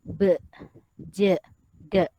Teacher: huruf ba, jim dan dal dia akhiran dia berbunyi i. Okey, berbunyi i, be, je, de. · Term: huruf qalqalah